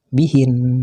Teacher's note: Yang ketujuh ialah kalimat-kalimat yang huruf akhirnya bertasdid. Waqafnya dengan mematikan huruf akhir tersebut, tapi tasdid dan bunyi gunnahnya tetap ada.